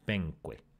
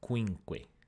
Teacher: the onset of the second syllable this kʷ assimilated the onset of the first syllable and basically copied itself in there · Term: assimilation through a distance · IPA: peŋkʷe